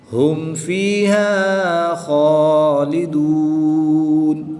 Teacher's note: میم کو خوب ظاہر کر کے پڑھیں گے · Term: اظہار شفوی